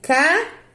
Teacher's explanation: essa palavra tem como sílaba tônica forte a última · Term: oxítona